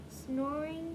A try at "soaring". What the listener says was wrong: Not snoring. There's no N. Cover up ing. And what word is that? Cover up ing, and what word is that? Soar. So add ing to the end, and it becomes?